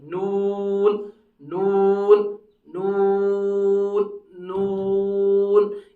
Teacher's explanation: करवट जुबान शुरू से आखिर तक और उसके साथ साथ मसोड़े, उससे निकलेगा नून। लेकिन नून के अदा करने में एक चीज का ख्याल रहे कि नून जब हम अदा करेंगे, होंठ जैसे गोल होते हैं, तो लेकिन होंठों के बीच में से हवा निकलनी चाहिए।